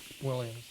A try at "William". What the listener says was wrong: No, William. No, not Williams. William.